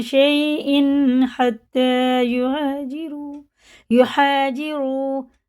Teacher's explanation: شیء حتی یہاجروا، دیکھئے یہ تنوین کے بعد ہا رہا ہے، یہ حرف حلقی میں سے جیسا لکھا ویسے ہی پڑھیں گے، نہ اس کو غنہ کریں گے نہ اخفا کریں گے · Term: اظہار